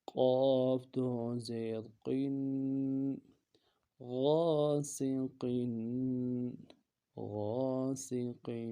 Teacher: تنوین ہے، غنہ کریں گے اور قاف کو موٹا پڑھیں گے